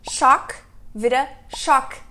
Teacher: Você não tem nenhuma corda vocal vibrando é só o ar passando pela sua boca sendo parcialmente bloqueado